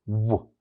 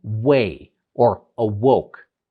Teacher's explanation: Now, there's another sound that's considered bilabial, where both lips don't actually close to create the sound, but they come very close together and they create this sound, which is w.